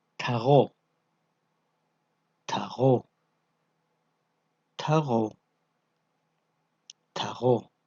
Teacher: Звуки х, г увулярные согласные. При их произношении язычок смыкается или сближается с самой задней частью спинки языка. Эти звуки легко образуются при вибрации этих органов.